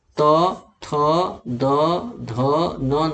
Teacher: दंत, बिना दांत के आप त, थ, द, ध, न नहीं बोल पाएंगे, क्योंकि दांत का स्पर्श करती है जीभ का अगला भाग। तो जीभ का अगला भाग जो स्पर्श करता है, इसीलिए इसे दंत वर्ग में रखा गया है।